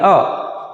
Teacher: को जब हम बोलते हैं तो कंठ से उसकी ध्वनि निकलती है अ कंठ और इसको बोलने में एक मात्रा का समय लगता